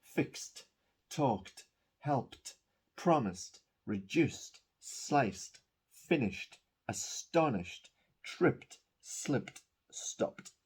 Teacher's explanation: This is the infinitive ends with an unvoiced sound, so we add a T, a very clear T sound.